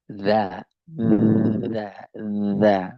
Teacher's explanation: Kalau za, coba bergetar. Ya, misalnya kalau ba, bergetar. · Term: jahar